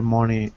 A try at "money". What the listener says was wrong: Be careful with the word money. Money. It's not an O, but it's an A. Money.